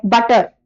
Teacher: बट बटर में जैसे flap जो है बटर ट उसमें वो फ्लैप है।